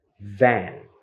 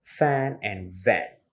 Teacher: it mean by labiodental sound leveling dental sounds means that when the top front teeth touch the lower lip